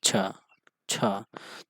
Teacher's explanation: छ ध्वनि का उच्चारण स्थान है तो कौन सा हो जाएगा तालव्य हो जाएगा